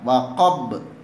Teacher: Huruf qafta jimdal berada di akhir ayat, maka cara membacanya setelah dibaca waqaf lalu dipantulkan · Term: qalqalah kubra